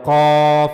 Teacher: قاف منہ کے اوپر والے نرم حصے، یعنی جو نرم تالو ہے وہاں سے قاف کو ادا کیا جائے گا، قاف۔ اور ہم نے یہ بھی پڑھا کہ قاف پر پڑھے جانے والے حروف میں سے ہے، لہذا اس کو ہمیشہ پر پڑھا جائے گا، موٹا کر کے پڑھا جائے گا، قاف۔